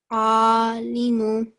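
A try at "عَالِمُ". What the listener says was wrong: Very good, excellent.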